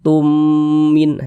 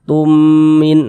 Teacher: Nah, jadi kalau ada huruf mim sukun, ada huruf mim ada tanda sukun, huruf mim sukunnya bertemu dengan huruf mim, maka hukumnya idgham mimi. Maka cara membacanya karena dia idgham dengan cara memasukkan kemudian disertai dengan dengungan